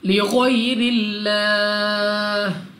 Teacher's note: लाम ऑफ अल्लाह से पहले हर्फ के नीचे है ज़ेर, तो इस लाम ऑफ अल्लाह को बारीक पढ़ेंगे, यानी अपनी आवाज़ को नीचे गिराकर